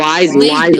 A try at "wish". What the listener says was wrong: না ওয়াইজ না এটা হলো উইশ উইশ উইশ